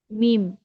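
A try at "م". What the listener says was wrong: মিম বলা যাবে না তো। মিম টেনে পড়তে হবে, চার আলিফ।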